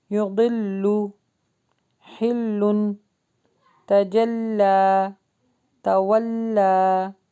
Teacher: لام کی اپنی اصلی حالت کو ہم باریک کر کے ہی پڑھیں گے۔